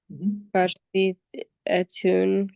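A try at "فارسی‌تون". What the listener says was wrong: you don't need the A anymore because it has already a long E. Farsimun, Farsitun.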